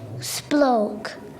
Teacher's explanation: he reduces the cluster to SP and uses the letter name O instead of the sound o to give the real word spoke